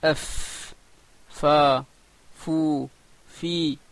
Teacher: La lettre fa sort de batin shafa soufla, c'est-à-dire la partie intérieure de la lèvre inférieure et le bout des dents supérieures. La partie inférieure de la lèvre, en fait, la partie intérieure, c'est la partie qu'on ne voit pas.